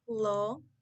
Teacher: Your tongue should be toward the back of your mouth. It's lower than for the O sound, and the back of your tongue is slightly raised.